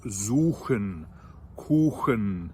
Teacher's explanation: the even harder, even further in the back CH sound, like with words like suchen, kuchen, which are CH after the U sound